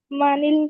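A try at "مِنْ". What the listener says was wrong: মিনাল না, মিনা নুনের উপরে যে জবরটা আছে না, এটা ভুল, এখানে সাকিন হবে।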